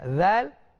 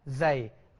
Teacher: Huruf zal tadi kita punya lidah tu keluar sikit dekat ujung gigi kita. Zal. Kalau boleh fokus, zal, az. Tapi huruf zai lidah kita di dalam, bukannya di luar.